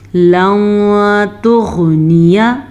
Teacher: नून साकिन के बाद तारुफ़े ख्वा में से है तो हम नून साकिन को छुपे हुए गुन्ने के साथ पढ़ेंगे